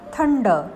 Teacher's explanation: थंड यात अनुस्वाराचा उच्चार ण आहे